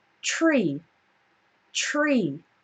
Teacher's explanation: when we have TR it often sounds a little bit like CHR it's it sounds like ch ch ch um well it's easier